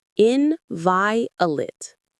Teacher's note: The stress is on the second syllable, that vi.